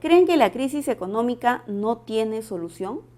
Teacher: En la oración presenta tono final ascendente, porque es una pregunta interrogativa directa